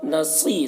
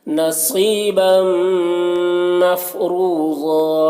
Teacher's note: صاد کو پر پڑھنا ہے، یا مدہ ہے، اسے 1 الف کے برابر کھینچ کر پڑھیں گے۔